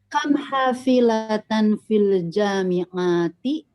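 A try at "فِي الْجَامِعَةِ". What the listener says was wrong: Fil jami'ati ya, ainnya pendek, kalau panjang ini nanti jadi jama.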